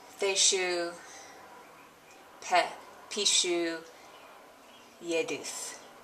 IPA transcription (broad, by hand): θeʃu pɛ piʃu jɛduθ